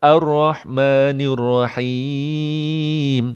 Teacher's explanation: Ra vokal O kerana baris atas. Tak boleh vokal E